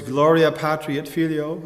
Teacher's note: we have an accent on Gloria, an accent on Patri, and an accent on Filio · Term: accent structure